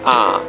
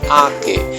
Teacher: সরায়া চন্দ্রবিন্দু ক একার কে, আ কে। সরায়ার উচ্চারণ আ, আর চন্দ্রবিন্দু দিলে আ, কেমন? একটু নাকে লাগে